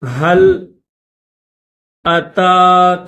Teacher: تا کے اوپر کھڑا زبر ہے، 1 الف کی لمٹ میں کھینچیں گے